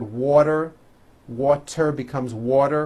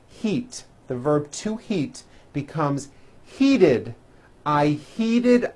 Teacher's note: when a t Falls between two vowels turns into a d like in the word water water becomes water remember that well